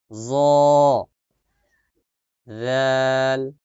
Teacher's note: জিহ্বার আগা সামনের উপরের দুই দাঁতের আগার সঙ্গে লাগিয়ে